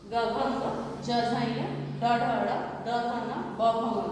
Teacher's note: वर्ग का तीसरा और चौथा, पांचवा व्यंजन होता है, सघोष होता है